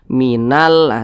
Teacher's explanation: cara membaca huruf lamnya ini dibaca jelas dibaca izhar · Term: alif lam qamariah